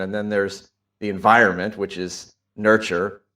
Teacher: He speaks a bit louder and more slowly, yeah, when he's discussing nature and nurture, genes and environment. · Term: emphasis